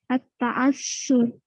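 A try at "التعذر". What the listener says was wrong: At-ta'adzur. Bukan at-ta'assur. At-ta'adzur. Zal. Kalau orang Sulawesi itu susah sebut zal.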